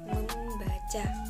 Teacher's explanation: proses pengimbuhan perfiksme pada dasar baca akan memunculkan atau akan menimbulkan suara sengau M yang semula tidak ada. Me ditambah baca maka akan menjadi membaca.